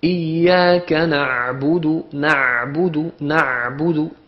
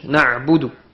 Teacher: Lorsqu'il y a l'ayn, vous remarquez que le ayn sort du milieu de la gorge